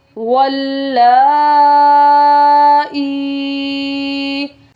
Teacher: زیر ہے، اور جب بھی یا ساکن سے پہلے زیر ہو تو وہ یا مدہ ہوتی ہے، اس لیے ہم نے یہاں پر حمزہ کو یا کے ساتھ ملانا ہے اور اس کو 1 الف کی مقدار لمبا بھی کر کے پڑھنا ہے۔ یہاں پر ہم نے حمزہ کو 1 الف کی مقدار لمبا کرنا ہے، اور حروف مدہ 1 الف کی مقدار لمبا کر کے پڑھے جاتے ہیں۔